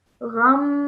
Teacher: So there's two sounds that you are holding in your nose, okay? One is of the meme because it is a meme gunna, and then the other is because of the tanween.